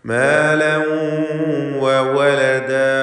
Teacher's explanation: മാലൻ വ തൻവീനിനെ വാവിൽ ലയിപ്പിച്ച് മണിക്കുക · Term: ബിഗുന്ന